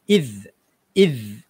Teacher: walaupun huruf dzal itu huruf mati, tapi masih lagi kita kena keluarkan lidah